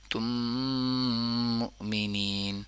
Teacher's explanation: میم پہ تھوڑا ہولڈ کریں کیونکہ غنہ ہو رہا ہے اور ادغام ہو رہا ہے